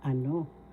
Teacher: So ano, first syllable a, second syllable no. The second syllable has the accent, so you say ano.